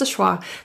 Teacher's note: of is actually reduced entirely to just an uh sound just awah the V is deleted entirely the corner of your